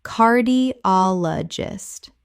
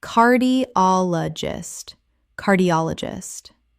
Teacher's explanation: The stress falls on the third syllable. op Five syllables in total.